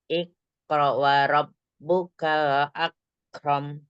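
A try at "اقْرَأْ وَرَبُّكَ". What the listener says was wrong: Yang kayaknya ya ikro. Ikro wa rabbuka. Jangan buru-buru. Kan dia ada hamzah sukun ya. Ikro.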